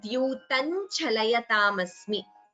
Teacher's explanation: Instead of complete visarga, we combine the sandhi and chant it as dyutan chalayatam asmi.